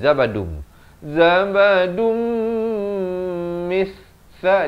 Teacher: idgham bi gunnah, tanwin bertemu mim, masuk beserta dengung. Daripada zabadun jadi zabadum.